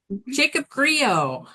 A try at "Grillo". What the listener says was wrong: Close, it's Grillo. We pronounce the L's.